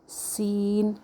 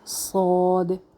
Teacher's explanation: rely کریں گے سیٹی کے لیے، لیکن فرق صرف اتنا ہے، سین میں زبان فلیٹ رہے گی، باریک ہے، صاد میں زبان اوپر اٹھ جائے گی